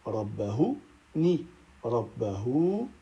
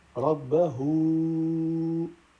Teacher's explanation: On allonge 4 ou 5 temps, vu qu'il y a le petit waouh avec la vague au-dessus · le petit waouh, après un ha qui possède une vague, est un temps de prolongation, mais de 4 ou 5 temps, appelé silah kubra.